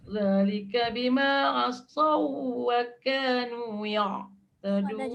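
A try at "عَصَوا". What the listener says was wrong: Sod dah jadi dah, tapi asau tu pula dia lama. Sod dah jadi dah. Wow, pula lama. Asau.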